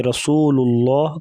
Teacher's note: گے، اشقاہا فقال لهم رسول اللہ، قاف کو موٹا کریں گے، را کے اوپر زبر ہے تو را کو موٹا کریں گے